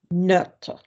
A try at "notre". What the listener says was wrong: Change your pissing vowel. Copy Auntie Lukey. Not. Just copy me. Not. Notre. Don't drift towards note because that is a different thing. So when we had vot and vote, vot didn't mean shit, but vote obviously meant, you know, the suffrage act of electing somebody, you know.